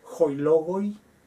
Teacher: Se hacen breves las terminaciones por excepción, a pesar de que se considere que son diptongos.